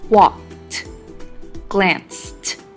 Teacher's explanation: In walked and glanced, the ed makes a t sound.